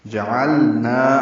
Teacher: نا یہ الف مدہ ہے، 2 حرکات لمبا ہے. جعلنا عین وسط الگ سے نکالیں گے، لام ساکن سے ملائیں گے، لام ساکن پہ اظہار ہوگا